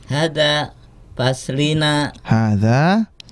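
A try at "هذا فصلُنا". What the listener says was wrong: Hada Hada fasluna ya. Kalau tidak ada huruf jar, maka tidak perlu dibaca kasroh. Hada fasluna.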